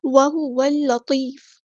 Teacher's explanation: لام یہاں پر لام شمسیہ ہے، اس کو ظاہر نہیں کرنا